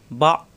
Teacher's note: শক্ত হবে কিন্তু বাড়ি খাবে না কলকলার মত হবে না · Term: হামজা সাকিন